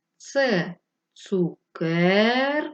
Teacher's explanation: який склад ми довше протягували так другий Отже другий склад наголошений